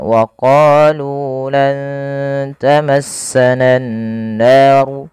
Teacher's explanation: panjangkan huruf qaf dan nu harus sama bunyinya antara qa dan nu karena ia bacaan mad tabi'i. Qa dipanjangkan dengan alif, lu dipanjangkan dengan waw.